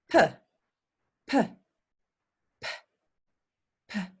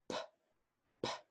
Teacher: when we say p the sound is coming through our from our lips and we'll feel a puff of air if you put your hand p p and if you put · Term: unvoiced